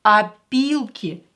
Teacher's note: This O will be pronounced as A because it's not stressed.